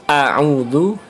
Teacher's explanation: Kalau kita rasakan, kita mengucapkan a'udzu itu sangat terlihat karena ain itu ada di tenggorokan bagian tengah, artinya naik